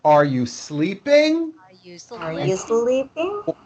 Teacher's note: Notice how my voice goes up at the end of a question like this. Are you sleeping?